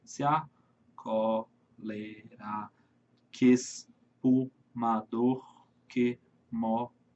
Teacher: Termina no mó, lembra? Última sílaba tônica. Então, 10 sílabas poéticas.